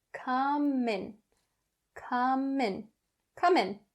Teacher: it would come in handy to pronounce this phrase properly first we're going to go over the connecting between come and in we bring that um sound over to in and we say come in come in come in and the